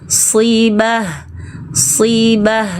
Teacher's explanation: angkat bagian belakang lidahmu, itu tebal